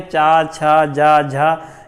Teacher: जब आप चा, छा, जा, झा का उच्चारण करते हैं तो कहीं ना कहीं जीभ आपकी ऊपर टच होती है बिना मुड़े। · बिना मुड़े जीभ आपकी आपके तालु में ऊपर टच करती है तो आप उसे तालव्य बोलते हो।